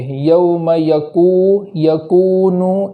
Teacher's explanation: کاف کے بعد جو واو مدہ ہے وہاں ایک الف کے برابر تاخیر کریں گے